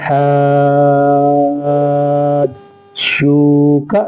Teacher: جیم کو پڑھتے ہوئے تھوڑا سا بھاری پن ہوتا ہے. جیم میں سختی بھی ہوتی ہے، یہ تشدید کی آواز میں سختی ہوتی ہے، اس لیے یہ مد لازم مثقل ہے.